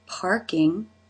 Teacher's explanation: the front part of the tongue has pulled back as the middle part of the tongue has fattened up and raised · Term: R consonant sound